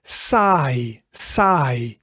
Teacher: the I sound is a combination between the A sound and the E sound. So that becomes I, saai.